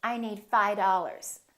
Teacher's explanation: That V in the word five just kind of disappears.